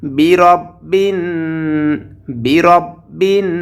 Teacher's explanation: বিন এখানে গুণনা করতে হবে, কারণ নুনের উপরে তাসদীদ এসেছে। আমরা জানি নুন এবং মিম এই দুটি হরফের উপরে যদি তাসদীদ আসে, এই চিহ্নটি আসে, তাহলে সেখানে গুন্নাহ করে পড়তে হয়।